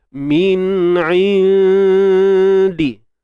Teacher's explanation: Kita naikkan suara ke hidung. Min indi. Bunyi hidung mesti ada. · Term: ikhfa